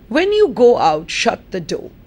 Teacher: i pause so that the meaning gets clearer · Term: sense group